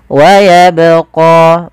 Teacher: Pada lafal bacaan wayabqa, di sini ada huruf ba yang diwarnai dengan warna biru. Ini menandakan dia bacaan qalqalah, yang dimana huruf ba ini harus kita pantulkan. Kesalahan yang terjadi, yang pertama tidak memantulkan huruf ba dalam membaca qalqalah.